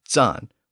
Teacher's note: today, the German version of the word is zahn, with a sibilant at the front instead of the original T sound